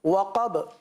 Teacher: وقب با پر قلقلہ ادا کیا جائے گا